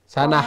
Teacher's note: আমরা স্টপ করলে এটা হা হয়ে যায়